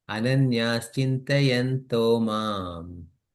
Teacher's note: Okay, so it becomes to mam. Instead of chintayantaha mam, it becomes chintayanto mam.